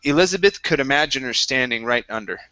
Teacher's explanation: when you're dropping the h you have to continue right through the word to the her